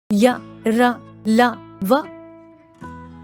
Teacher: जिन व्यंजनों के उच्चारण में मुंह के किसी भाग से जीभ का स्पर्श पूरी तरह से नहीं होता है या जीभ मुंह के किसी भाग से बहुत ही हल्का सा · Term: अंतस्थ व्यंजन